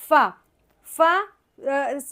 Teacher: فا، فا اوپر کے جو سامنے کے جو دانت ہیں اس کی نوکوں کو ہم نے نیچے کے ہونٹ کے اندرونی حصے سے لگائیں گے تو فا ادا ہو جائے گا